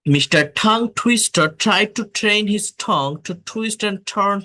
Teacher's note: T sound specific, টটাকে বলবো ঠ এর মতো, এটাকে বলে অ্যাসপিরেটেড সাউন্ড। ট যখন শব্দের শুরুতে বসে তখন এটা অ্যাসপিরেটেড হয়।